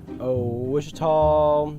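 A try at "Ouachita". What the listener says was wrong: Searching for Washita Baptist University. It's Washita Baptist University.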